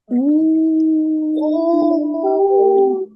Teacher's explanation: так наші губки витягнулись в трубочку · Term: звук у